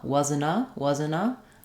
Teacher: I might drop the T entirely because NT tends to uh drop in linked cases